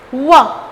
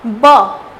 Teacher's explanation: ब बोलते समय दोनों ओष्ठ छूती है एक दूसरे को, दोनों होठ छूती है, तो ब स्पर्श किया, टच किया, ब। लेकिन व बोलते समय व ये थोड़ा सा सर्कल हो जाता है दोनों होठ